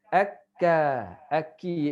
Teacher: Kalau kaf akka. Aki iaitu di langit-langit lembut.